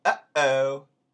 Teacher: it's spoken way back on the throat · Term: glottal stop